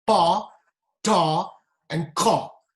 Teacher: These are aspirated, as a strong breath of air follows, right from your stomach. In English, we have 3 aspirated consonants: pa, ta, and ka